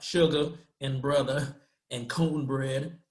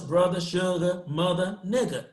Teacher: Notice they're taking the R away after a vowel.